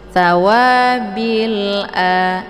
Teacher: alif lam alqamariyah alif lamnya tetap dibunyikan yaitu nampak bunyi sukunnya